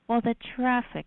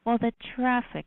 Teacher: she says traffic with this turbulent aspiration of t with very long R and with an extremely long unusually long vowel listen to it again well the traffic I was beside myself